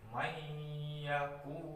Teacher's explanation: Di sini ada nun mati bertemu dengan ya, di mana ya tersebut adalah salah satu huruf idgham bihunah. Jadi membacanya itu memasukkan nun mati ya fathah ini ke nun mati dengan disertai dengan dengung